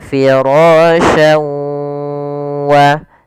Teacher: memasukkan huruf tanwin pada lafal syan ke huruf waw, kemudian digunnahkan, ditahan. Karena idgham bi gunnah artinya memasukkan disertai dengan gunnah.